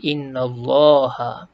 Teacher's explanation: Inna ni baris atas. Maka lam ni dibaca tebal. Tak baca innallah tapi innallaha. Kemudian pada lam kedua ni panjangkan 2 harakat.